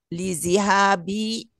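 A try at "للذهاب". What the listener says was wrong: Lizahabi, Bu. Dah bukan di.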